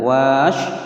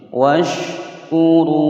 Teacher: Washkuru, di sini ada alif ya, alifnya tidak terbaca ya, tidak boleh membaca wa panjang, wash salah ya, langsung masuk ke shin.